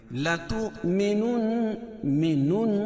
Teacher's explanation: نون مشدد اس میں غنہ ہوگا اور کھڑی زیر قائم مقام یا مدہ کی